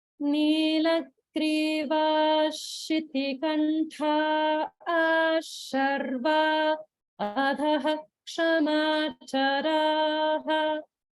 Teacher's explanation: there's a gap between Sharva and Adhaha